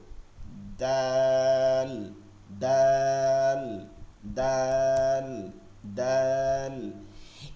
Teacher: এটার মাখরাজ হচ্ছে জিব্বার আগা, বিপরীত জিব্বার আগা, উপরের দুই দাঁতের গোড়ার সঙ্গে লাগায়া উচ্চারণটা হবে শক্ত এবং চিকন